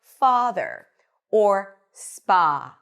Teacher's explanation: Lips are relaxed. And it's slightly longer and more lazy. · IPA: /ɑ/